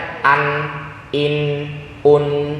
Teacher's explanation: ujung lidah dan rongga hidung kedua-duanya aktif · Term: izhar